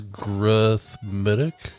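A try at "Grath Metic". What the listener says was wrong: Metic with a T, not a D.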